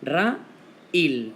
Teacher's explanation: La A y la I son vocales que han sido separadas y forman sílabas distintas. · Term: hiato